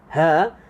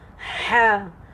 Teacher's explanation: Dua-dua huruf ni keluar, makhraj dia keluar dekat alqum. Satu saluran yang sama, tapi tingkat yang berbeza. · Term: tingkatan makhraj